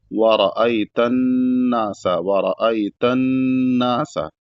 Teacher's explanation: वता और ता को नून में मिलाएंगे तो नून मुशद्ददा है और नून मुशद्ददा जब होता है यानी उस पर जब तशदीद होता है तो उसको वहां पर गुना किया जाता है और गुना एक अलिफ से दो अलिफ के बराबर नाक में आवाज रहेगी